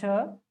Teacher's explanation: ये श तालव्य है, और उसके साथ साथ ऊष्मीय है।